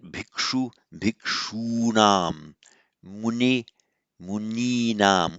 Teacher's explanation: So you always get this lengthening of a short vowel before the nam of the genitive plural.